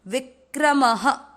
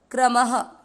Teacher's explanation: विक्रम, म में अ की मात्रा मिक्स करनी है। विक्रम, म में अ की मात्रा तो विसर्ग को पढ़ेंगे ह